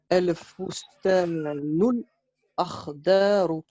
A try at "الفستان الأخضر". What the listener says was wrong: éviter, et c'est bien, là c'est bien, tu l'as bien prononcé, mais il faut éviter de laisser une longue pause entre les deux mots, tu vois. Soit tu enchaînes bien, ou soit tu peux t'arrêter, c'est pas interdit de s'arrêter.